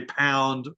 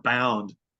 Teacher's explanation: Egyptians talking English about a pound might say bound.